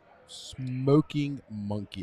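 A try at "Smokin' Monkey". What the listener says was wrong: It's not Smoking Monkey. It's Smoke In. Smoke In Monkey.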